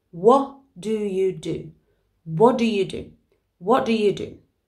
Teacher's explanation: the t at the end of what disappears because we've got the d at the beginning of do